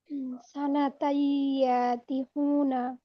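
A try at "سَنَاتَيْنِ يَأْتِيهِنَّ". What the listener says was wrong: সানাতাই। তাই আপু, একটু খেয়াল করুন, টান আছে ওইখানে। তাই টান আছে একালিফ, তার মানে আমাদের টানতে হবে। সানাতাই ইয়াতিহুনা।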